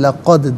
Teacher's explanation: دال ساکن ہے، حرف قلقلہ ہے تو آواز لوٹتی بھی محسوس ہونی چاہیے۔